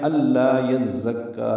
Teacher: زا تیز صفیر کی آواز سے ادا ہو، کاف سے ملائیں گے، کاف باریک۔